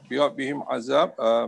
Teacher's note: mim mati bertemu dengan ain, hukumnya izhar syafawi, tak ada dengung